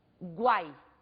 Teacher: o U constitui uma semivogal, o A numa vogal, que é o som pronunciado com maior intensidade, e o I, uma outra semivogal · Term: tritongo